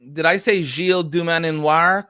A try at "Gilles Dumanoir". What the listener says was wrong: I think it's just Gilles Dumanoir. The second N is silent. It's not. It is a vestigial syllable.